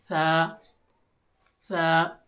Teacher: خاص توجہ دیجیے، اس حرف کو بہت سے لوگ سین کی طرح پڑھتے ہیں جو کہ بالکل غلط ہے۔ اپنی زبان کی نوک کو، زبان کی نوک یہ حصہ، سامنے والے اوپر کے دانتوں کے کنارے سے ذرا سا چھوئیں اور اسے بالکل نرمی سے ادا کریں